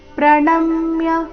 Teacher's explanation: ಪ್ರಣಮ್ಯ ನ ಮೇಲೆ ಆಘಾತ